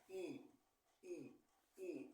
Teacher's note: la i es una vocal anterior y alta · estiro más la boca, como te puedes dar cuenta, por eso es anterior. Jalo más la boca.